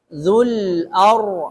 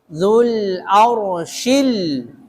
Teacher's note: Arshi ra, ada sifat takrir pada huruf ra.